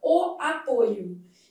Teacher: Já o substantivo derivado do mesmo verbo apresenta a vogal o fechada, o apoio. Então, apoio substantivo apresenta a vogal fechada com esse timbre verdadeiro.